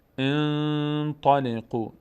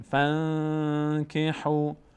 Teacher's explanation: یا اگر بعد از نون ساکن تا بیاد انطلقوا، صدا از بینی ادا میشه، صدای نون مخفی میشه در بینی و مقدار روش توقف میکنیم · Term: اخفا